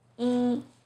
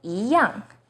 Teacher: 一 as in number 1 is pronounced as 一, but in 一 样, it becomes the 2nd tone.